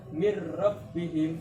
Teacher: suara nunnya hilang masuk pada ro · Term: idgham bilaguna